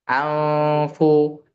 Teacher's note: Anfu itu posisi ujung gigi seri atas sudah di bibir bagian bawah. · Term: ikhfa